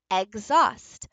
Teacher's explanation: normally this X should be a k, s, but what we see is a voiced version of those